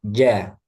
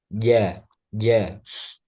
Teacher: Jim dia tengah lidah bertemu langit-langit. Nah, kemudian udaranya dia tertahan. Jangan sampai ada udara.